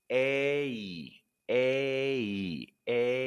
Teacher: open with an e and glide into a relaxed e